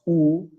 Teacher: when you pronounce U, where your tongue is in a very back position. But in both cases, your tongue is high.